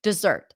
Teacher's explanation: The second syllable has the as in stir sound. So it's kind of like a stressed schwa with an R altogether, kind of like cooked together, mixed together, dessert.